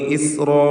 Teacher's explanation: ഇസ്റാ എന്ന് പറയുമ്പോൾ റാഇന് തഫ്ഖീം, അതിൻ്റെ ദീർഘാക്ഷരമായ അലിഫിലും തഫ്ഖീം തടിപ്പിച്ച് ഉച്ചരിക്കണം. ആ ദീർഘമാകട്ടെ മദ് മുത്തസിൽ വാജിബ് എന്ന ദീർഘമാണ്.